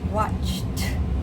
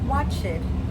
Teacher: Now with the T sound, you'll notice that we do not add an extra syllable. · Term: not adding any extra syllables